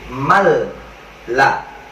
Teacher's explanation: nun matinya ilangin, mim itu langsung masuk ke dalam lam. Lamnya itu di atasnya seakan-akan ada tasjid, mal la. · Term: idgham bila gunnah